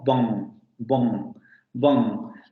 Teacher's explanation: El momento explosivo u oclusivo se va a producir en los dos labios, es decir, se van a cerrar esos dos labios, bilabial, y va a haber vibración de cuerdas vocales. Aquí no hay ningún fenómeno de aspiración ni nada por el estilo, entonces no habría ningún problema. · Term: Bilabial oclusiva sonora